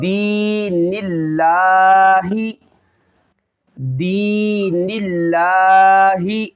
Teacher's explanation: اس میں جلالت اللہ عز و جل کے لام سے پہلے زیر آ رہی ہے، اس کو باریک پڑھنا ہے، موٹا نہیں کرنا، ہیلدی نہیں کرنا بلکہ باریک پڑھنا ہے۔